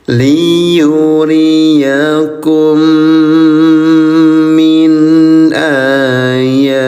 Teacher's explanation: Pertemuan mim dengan mim menghasilkan aturan tajwid yang disebut idgham mimi, membacanya untuk dua harakat dengan senandung